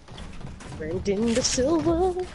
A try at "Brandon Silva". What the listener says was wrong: Brandon Silva. Oh, it's just Brandon Silva, not De Silva.